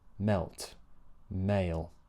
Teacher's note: Notice how the A vowel is longer. It needs to be because you're sliding from one vowel to the next.